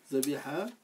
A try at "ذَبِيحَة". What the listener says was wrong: Il te manque ce qu'on appelle la marque du féminin. C'est le ta marbuta.